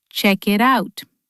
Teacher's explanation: Check it out. doesn't sound like three separate words. It sounds like one long word. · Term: Linking